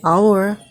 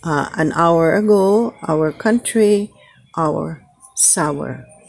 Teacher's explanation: Ito naman ay ow. Ito sa IPA ay merong dugtong na schwa sound. So we say our, pareho po ang tunog niyan.